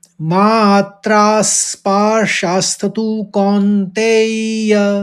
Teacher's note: कौन्तेय लगना चाहिए कि झन्न हो रहा है कौन में। इस तरह से इसको उच्चारित करेंगे। · इसका उच्चारण देखिए कि तीन आघात दिख रहे हैं मात्रा स्पर्शास्तु में। तो मात्रा पहले मात कहेंगे, फिर त्रास कहेंगे, फिर स्पर्शास्तु बोलेंगे।